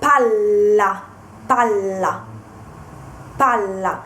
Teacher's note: uh stress the Double L so pal Pala paa and this the Double L Sound is quite long compared to the uh L · Whereas if you pronounce Pala with just one L, it means shovel. So if you mean the ball, the round object, you have to stress the double L.